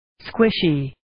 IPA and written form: 'skwɪʃiː (Squishy)